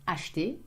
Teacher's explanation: Again, we have a E in the middle that we eat up.